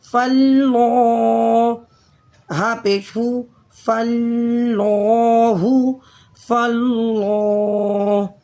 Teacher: دونوں لام کے اوپر جمع بھی کریں گے اور اسے موٹا بھی پڑھیں گے۔ فلو، کھڑے زبر کی وجہ سے ایک الف کے برابر کھینچ کر بھی پڑھیں گے۔